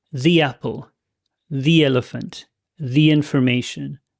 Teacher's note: all of those links is like there is a little Y sound linking them together